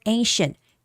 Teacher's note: So here the word ancient this C is sh the sound of sh.